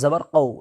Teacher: کاف نہیں ہے بلکہ بڑی قاف ہے، تو پر کر کے منہ بھر کے پڑھیں گے